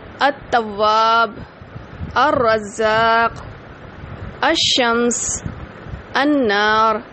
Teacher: ال کا لام نہیں پڑھا جاتا، بلکہ ال کے لام کو ہٹا کر آگے تشدید لگا کے اس کے ساتھ پڑھا جاتا ہے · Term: حروف شمسی